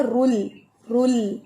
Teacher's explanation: رو موٹا ہے لیکن لام باریک ہے.